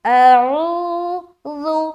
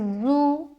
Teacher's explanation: اعو اعوذ، ذال کو پھر نرمی کے ساتھ باریک ادا کریں گے۔ ذال کی ادائیگی بغیر سیٹی کے ہوتی ہے، اس میں سیٹی نما آواز نہیں آنی چاہیے۔